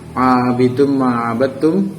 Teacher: di situ ada tanwin bertemu dengan mim, maka bacaannya agak mendengung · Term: idgham bigunah